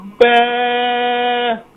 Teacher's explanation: با کو ایک الف کی مقدار سے زیادہ نہیں کھینچنا ہے اور با کو کوشش کریں کہ دونوں ہونٹوں کے گیلے حصے کو ملا کر سختی سے ادا کریں.